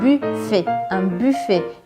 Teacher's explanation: é aquele u com biquinho bem do francês mesmo